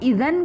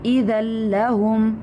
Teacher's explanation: इज़ल्लहुम, अब इज़न करेंगे तो हम नून को प्रोनाउंस कर रहे हैं, हम नून वहाँ पर नहीं पढ़ेंगे हम, क्योंकि कायदा यहाँ पर लग रहा है तनवीन के बाद दो ज़बर के बाद लाम आ रहा है हरूफ यरमुलून में से, तो वहाँ पर इदगाम होगा। हम नून को नहीं पढ़ेंगे, नून को लाम में मर्ज कर देंगे।